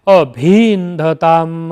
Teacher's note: इस प्रकार दोनों ई ह्रस्व ई मिलकर दीर्घ ई हो गए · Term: प्रश्लिष्ट स्वर